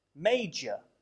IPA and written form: ˈmeɪdʒə (major)